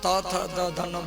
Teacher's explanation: जब तक दांत नहीं निकलेगा, जीभ दांत में जब टकराएगी तभी त थ द ध न ये 5 अक्षर का उत्पत्ति होगा। त थ द ध न बोलते समय आपका जीभ दांत में टकराती है। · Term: दंत वर्ण